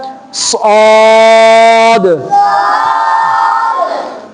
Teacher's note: موٹا پڑھنا ہے، پر پڑھنا ہے، آواز کو موٹا کر کے اس لفظ کو ادا کیا جائے گا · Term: حروف مستعلیہ